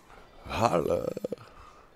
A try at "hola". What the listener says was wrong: I think that's hola. Hola. I'm pretty sure the H is supposed to be silent.